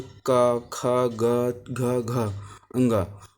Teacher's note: इनको आधुनिक वैज्ञानिक आधुनिक विद्वानों ने इसे कोमल स्पर्श भी कहा है, यानी कावर को कोमल स्पर्श भी कहते हैं, और इनका उच्चारण कंठ से होता है